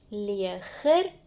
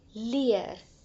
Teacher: ons hoor 'n g-klank in die Nederlandse woord, wat ons nie in die Afrikaanse woord hoor nie